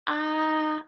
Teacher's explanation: the first tone you go high up